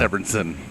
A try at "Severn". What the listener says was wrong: Severn. Just Severn. No, just Severn. an extra syllable because of that mustache.